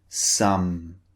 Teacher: first sound as in some notice the shape of the lips the lips are closed and the air is coming through the nose this time